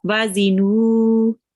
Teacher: So when there is a waw with this sukoon sign, this kind of thing is called a sukoon sign, and then there is a letter before that which has a dhamma, then you prolong it for 2 seconds. Okay, the noon you prolong for 2 seconds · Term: waw madhiya